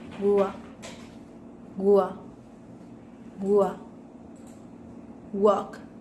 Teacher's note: With manner of articulation, approximant, and place of articulation, bilabial.